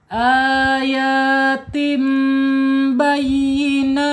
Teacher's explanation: Ayatim iqlab ya. Iqlab tanwin ketemu huruf ba. Harus ditahan dulu dua harakat dan ee didengungkan.